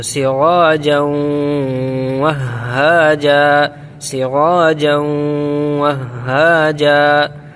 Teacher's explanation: یہاں پر ادغام ہوگا، غنہ کے ساتھ پڑھیں گے اس کو